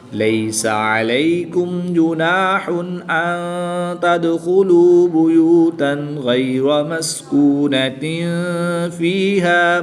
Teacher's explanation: نون ساکن کے بعد تا حروف اخفا میں سے ہے تو یہاں پر اخفا ہوگا یعنی غنہ زمانی کر کے پڑھیں گے